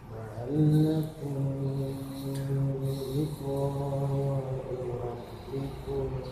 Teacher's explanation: Jadi kumnya itu samar juga, samarkan juga ya. Samarkan juga, kemudian tahan atau dengungkan 3 harokat. La'allakum, jadi jangan kumbi, tapi kum sama. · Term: Ikhfa syafawi